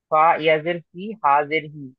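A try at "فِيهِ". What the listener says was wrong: ফি টান দেন, ইয়া মাদ্দা আছে, ইয়া সাকিন, ডান দিকে যে রিয়া মাদ্দা, একালিপ টান হবে। ফি হি।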